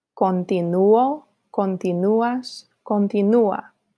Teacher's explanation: If you listen carefully, you can hear that the stress in the boot forms falls on the U just before the ending